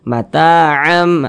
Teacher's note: jadi iklab itu kita dengungkan jadi suaranya itu kita tahan kita panjangkan sejenak Matam amnya itu kita tahan kita panjangkan sejenak Matam Bil marufah